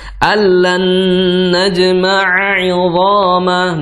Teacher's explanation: Nah, di situ bertemu lagi huruf nun ya, huruf nun yang bertasdid, maka ditahan dulu.